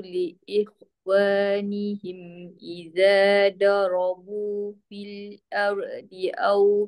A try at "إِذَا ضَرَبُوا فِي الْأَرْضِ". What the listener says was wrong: Iza yang pertama bo jangan da. Bo. Iza darabu fil ar. Ingat ra tak boleh lantun. Tak boleh ar.